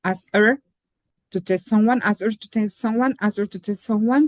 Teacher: the H sound is not very strong, especially after the sound T, right?